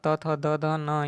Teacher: त थ द ध न, ये जो होता है दंत को यानी दांत को टच करता है। आप त बोलिए, थ बोलिए, द बोलिए, दांत को टच करेगा आपका जीभ जो है।